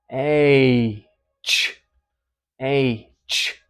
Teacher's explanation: And it's an affricative because it starts kind of like a plosive. The air pressure builds up and pops out, but as soon as the air starts moving, it's in a fricative.